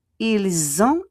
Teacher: Ils ont, the S will become a Z. Ils ont, and we don't pronounce the T